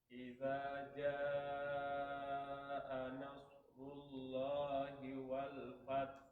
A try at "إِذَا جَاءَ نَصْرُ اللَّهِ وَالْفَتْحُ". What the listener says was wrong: Nah, itu ada spasi tuh. Jangan pakai spasi. Satu spasinya itu. Hilangkan spasinya. Ulang lagi. Hilang spasinya sekalian huruf H-nya yang hilang. Spasi memang hilang, H-nya juga hilang gitu kan.